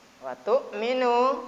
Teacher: hamzah termasuk huruf halki, huruf yang keluar dari tenggorokan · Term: idhar halki